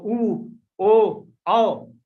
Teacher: ऊ, ओ, आओ बोलोगे तो आपके जीभ का जो पीछे वाला भाग है वो क्रियाशील होगा